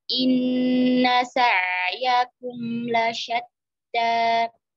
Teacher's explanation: inna tashdid, ya, dua harakat gunnah, jadi tidak boleh terburu-buru. Kemudian sa'yakum antara ain sukun dengan mim sukun disamakan temponya, ya, karena sama-sama bain, ya.